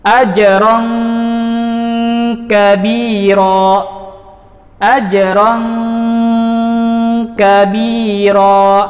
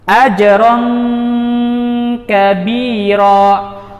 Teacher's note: Tingkatan ikhfa yang terendah adalah ketika nun sukun atau tanwin bertemu dengan dua atau salah satu dari dua huruf, yaitu qaf dan kaf. Maka seakan-akan kita membaca ikhfanya seperti kita mengucapkan huruf ng